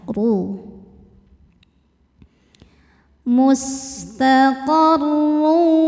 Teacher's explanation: huruf ro dibaca secara tafkhim karena berharakat dah dammah tanwin. Cara baca huruf r-nya ini adalah ee ditebalkan ya ru mustaqarru.